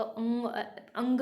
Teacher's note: अंग मतलब पीछे से आवाज़ आ रही है आपकी, टंग के पीछे से